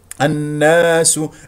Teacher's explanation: النون المشدده لانه لدينا همزه وصل ولام شمسيه لانه كما ترون جاء بعد حرف مشدد النون وفي غنه بمقدار حركتين الناس افتح الفم في الالف التي بعد النون المشدده السين مضمومه